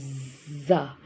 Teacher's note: زا یہ حروف صفیریہ میں سے ہیں اور زبان کی نوک اور دو دانتوں اوپر والے دو دانت اور نیچے والے دونوں دانت ان چاروں کے کناروں کے ساتھ ٹچ کرنے سے حرف زا ادا ہوگا اور یہ سختی سے پڑھا جاتا ہے زا اور یہ سیٹی والا حرف ہے. آپ جب پڑھیں گے تو آپ کو سیٹی سی فیل ہوگی ایک منہ سے نکلتی ہوئی زا. pronounced from the tip of the tongue touching the inner edge of the top two and bottom two front teeth.